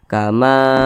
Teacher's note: dan posisinya tepat berada di belakang huruf alif namanya Mad thii panjangnya dua harakat atau kira-kira dua ketukan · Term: Mad thbii'i, mat tabi'i